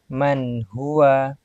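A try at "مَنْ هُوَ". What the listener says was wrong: Man huwa. Jangan sampai terputus. Man huwa.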